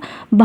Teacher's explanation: भा कैसा है महाप्राण है ध्यान रखिएगा भा महाप्राण है और घोष वर्ण तो है लेकिन यह महाप्राण है